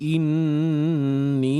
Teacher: wajib kita dengung dan dibaca panjang dua harakat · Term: wajibul ghunnah